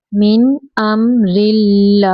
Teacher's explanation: अल्लाह कलाम भी यहाँ पे बारीक पढ़ेंगे क्योंकि अल्लाह कलाम के पिछले हरफ के नीचे ज़ेर है